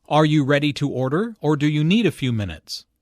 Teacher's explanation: The word or signals a choice here. Notice the rising intonation on order and the falling intonation on minutes.